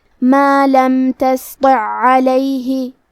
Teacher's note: ہے، پھر حرف العین ہے کلمت علیہ، یہاں حکم ہے ادغام، ہم پہلے عین کو دوسرے عین میں ملا کے ایک ہی عین اور تشدید کے ساتھ پڑھیں گے · حرف الطا حروف تفخیم میں سے ہے تو ہم حرف الطا کو بھاری آواز میں اور منہ پھلا کے پڑھیں گے